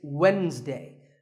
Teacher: it's Wednesday the D is silent